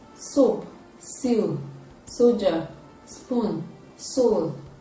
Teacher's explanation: It is a voiceless sound, and it is produced when the tip of the tongue is touching the alveolar ridge. It is a voiceless alveolar fricative sound.